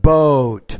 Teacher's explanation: make that o longer that's a longer vowel sound